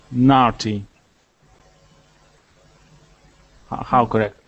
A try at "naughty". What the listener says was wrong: Yes, that's right.